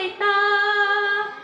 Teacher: তায়ের মাখরাজ জিহ্বার আগা উপরের দাঁতে গোড়া লাগিয়ে বলতে হবে তা